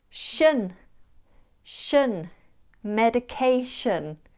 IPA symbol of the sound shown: ʃən